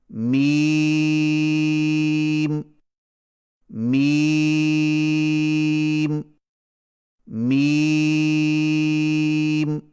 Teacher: میم کی ادائیگی میں ہونٹوں کے خشک حصے کو قدر نرمی سے ملا کر باریک آواز میں پڑھیں